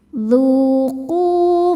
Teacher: Dzu qu hukumnya adalah mad thobi'i zohiri. Sebab ada wau sukun sebelumnya baris dommah. Cara bacanya panjang dua harakat.